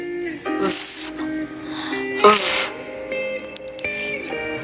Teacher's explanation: It is voiced counterpart. The voiced labiodental fricative